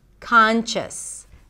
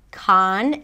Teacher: you pronounce it with a k sound at the beginning, then the a as in father, con, you close it with an n, con, and then chis, chis, a chis sound, a schwa, and an s, chis, conscious.